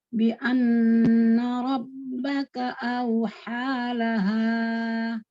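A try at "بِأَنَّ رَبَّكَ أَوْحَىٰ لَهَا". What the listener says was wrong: Bagus, tapi kalau bisa panjang H di akhir itu cuma 2 harokat. Jadi sama auha, H-nya kan 2. Sama nih, auhalaha. Dah, nggak boleh panjang-panjang.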